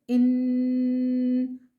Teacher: مشدد حرف کو 2 حرف کی مقدار، مطلب 2 سیکنڈ کی دیر لگا کر مضبوطی اور جماؤں کے سے پڑھتے ہیں، اور نون مشدد میں 2 سیکنڈ ہم غنہ کرتے ہیں